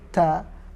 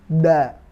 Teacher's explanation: Yang membedakan ta ada angin yang keluar, ada hamznya, ta, sedangkan dal tidak ada, da.